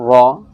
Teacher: جب را کے اوپر زبر آتا ہے تو را موٹا ہو کے پر ہو کے پڑھا جاتا ہے